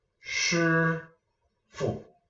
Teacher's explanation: There's no rising tone, there's no falling tone, there's no accent, it's just fu. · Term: fifth tone